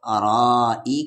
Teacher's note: مد کے سمبل کے بعد حمزہ 3 سے 4 الف کے برابر کھینچیں گے